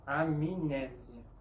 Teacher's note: Tiene sonido como si hubiera una I entre la M y la N.